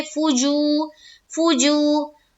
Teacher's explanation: वाव साकिन से पहले पेश है, वाव मद्दा होगा, वाव मद्दा को एक अलिफ के बराबर खींच कर पढ़ेंगे।